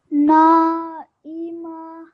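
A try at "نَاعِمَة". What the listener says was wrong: Yes, excellent.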